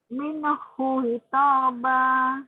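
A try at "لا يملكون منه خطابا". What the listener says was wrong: Khitaba. Kho-nya yang agak serak.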